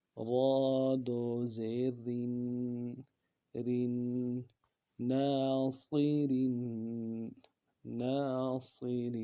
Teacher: اب باریک کریں گے را کو کیونکہ را کے نیچے 2 زیر ہے، زیر یا 2 زیر ہو، باریک پڑھیں گے۔